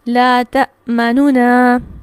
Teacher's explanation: نون کی پیش کو بالکل ہلکا سا پڑھنا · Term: اظہار مع روم